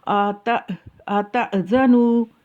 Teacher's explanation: جب حمزہ ساکن ہوتا ہے تو اس کا مخرج، اس کی نکلنے کی جگہ ہنسلی کی ہڈی جو سینے سے ملی ہوئی ہے اس جگہ سے ہوگا · حمزہ کے اوپر ساکن ہے تو اس کو ایک جھٹکے سے ادا کرنا ہے ، اور اس کی جگہ جو ہے وہ ہنسلی کی ہڈی